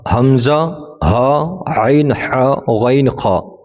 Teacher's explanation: تو شروع حلق سے جو سینے کی طرف ہے وہاں سے حمزہ اور ہا ادا ہوتا ہے، اور بیچ حلق سے عین ہا ادا ہوتا ہے، اور آخر حلق سے غین خا ادا ہوتا ہے۔